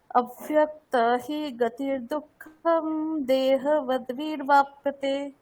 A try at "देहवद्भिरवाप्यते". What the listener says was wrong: এখানটা একটু ভুল করছেন, দেহবদ্ভিরবাপ্যতে এরকম কিছু একটা বলছেন, রকারটাকে স্পষ্ট বলতে হবে, ঠিক আছে?